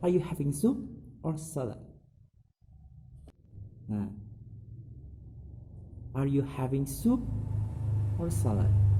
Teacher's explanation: The intonation is at first rising at soup, and then it falling in salad.